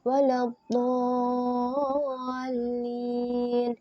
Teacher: mad yang diikuti oleh sukun asli, maka dibaca panjang 6 harokat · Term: mad lazim